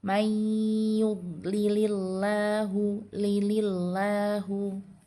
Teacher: dibaca tarqik atau dibaca tipis. Karena sebelum lafaz Allahnya itu dia berharakat kasrah.